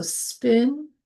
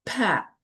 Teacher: the P in spin, a softer P, is an allophone of the P in pat, a stronger P.